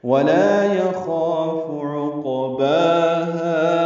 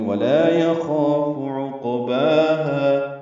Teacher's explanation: عقباہا عین وسط حلق سے ادا کریں گے، قاف ساکن ہے، اس پہ قلقلہ ہے ، یہ پر ہے، با اور ہا دونوں کو برابر لمبا